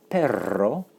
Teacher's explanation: And of course, it's not to be confused with perro. Notice the trilled R because that's the word for dog.